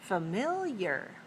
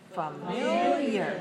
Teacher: familiar has 3 syllables, and it's stressed on the second. Right, 3-2.